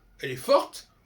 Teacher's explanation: Elle est forte, on entend le T.